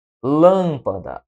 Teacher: Lâmpada, a sílaba tônica é a antepenúltima